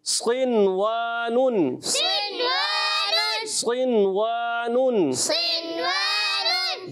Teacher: نون ساکن کے بعد حرف یرملون اسی کلمے میں آ رہے ہیں اظہار مطلق ہوگا مطلقاً اظہار کر کے پڑھیں گے غنہ نہیں کریں گے